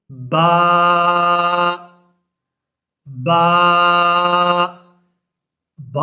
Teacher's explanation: یہ دونوں ہونٹوں کو ملانے کے بعد جب ہم ان کو کھولیں گے تو وہاں سے با ادا ہوگی، یعنی دونوں ہونٹ ملا کر رکھیں گے اور پھر ہم با ادا کریں گے۔